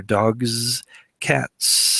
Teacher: the g g sound is voiced dogs and so the the the letter s becomes voiced which makes it a z a zz sound in cats the T sound is not voiced · in cats the T sound is not voiced so my S at the end is not voiced either